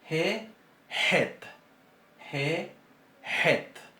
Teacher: este sonido se va a pronunciar un poco más atrás que la G y es más fuerte